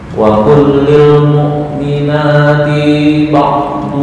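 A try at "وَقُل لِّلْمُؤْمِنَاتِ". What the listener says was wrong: Ti pendek.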